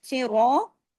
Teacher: صراط میں صاد ہیوی ہے اس لیے کہ 7 موٹے حروف میں سے ہے۔ را اس لیے ہیوی ہے کہ را پہ زبر ہے، را کو 2 حرکات کھینچنا ہے، الف بھی ہے۔